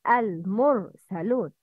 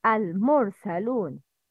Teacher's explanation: Ra with sukun after a letter with dhamma is always mufakhama, heavy letter.